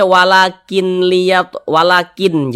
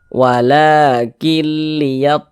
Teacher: tapi dibaca walakil, langsung masuk ke huruf lam.